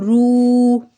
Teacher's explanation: رو الٹا پیش رو، اب رو کو بھی ہم نے کیا پڑھا تھا کہ رو کے اوپر جب پیش آ جائے یا الٹی پیش آ جائے تو ہم اس کو تھوڑا موٹا کر کے پڑھیں گے